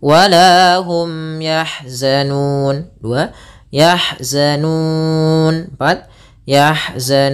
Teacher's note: maka dia panjangnya boleh kita panjangkan dua harakat boleh empat harakat · Sebelumnya ada huruf mad, mau dia fathah dengan alif, atau kasrah dengan ya, atau dengan dhamma dengan waw. Maka dia panjangnya boleh kita panjangkan 2 harakat, boleh 4 harakat, dan boleh pula 6 harakat. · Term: mad arid disukun